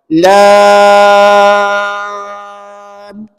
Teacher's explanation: harakat yang sebenar bermula pada lam. 6 harakat.